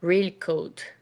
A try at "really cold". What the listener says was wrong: Don't eat the Y. Really cold. Cold.